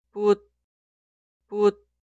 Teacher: La consonante final siot no es explosiva. Debe detener el flujo de aire.